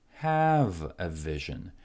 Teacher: he puts a lot of stress on have. His voice really goes up. Have a vision, because now he is making a very important distinction between creating a vision and having a vision.